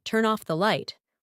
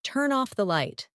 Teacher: a native speaker will say turn off the light like it's one single word